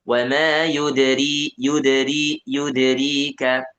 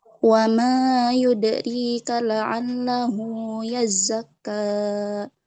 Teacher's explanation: pengucapan huruf dal di sini jangan diputus. Memang qalqalah ya, memang dipantulkan tapi jangan diputus. Jangan wa ma yudrika, tapi wa ma yudrika.